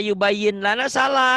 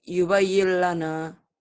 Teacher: Melebur tapi jangan pakai Dengung. dengung. Jangan ditahan. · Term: idgham bila gunnah